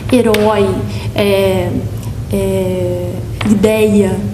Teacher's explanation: Nós temos ditongos abertos, por exemplo, ei e oi, que eles eram acentuados quando abertos em qualquer palavra.